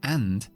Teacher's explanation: cambiamos la a por la el sonido más común que hay en la lengua inglesa relajamos todo